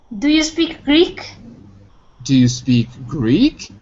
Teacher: So the rising tone is only at the end of a yes/no question. · Rising on the word Greek. Because it's the main topic in this question.